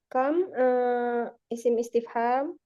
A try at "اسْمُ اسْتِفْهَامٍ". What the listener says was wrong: اسم استفهام. في القراءة نقول اسم استفهام. همزanya jangan dibaca karena hamzah wasal.